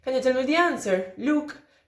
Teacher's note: this look at the end of the utterance is part of the tail, so it is in the same IP. It doesn't have a separate IP.